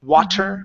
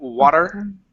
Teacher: word water we don't say water but water ok and when our tongue flaps and it hits against the top of our mouths and comes down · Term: flap T